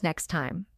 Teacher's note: The T often disappears